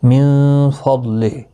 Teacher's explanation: من فضلہ نون ساکن کے بعد حروف اکفا کا فائق و حقیقی ہوگا، ضاد مستعلیہ ہے، پر پڑھا جائے گا، اور یہاں وقف جائز ہے، ہاں ساکن پڑھا جائے گا وقف کی صورت میں۔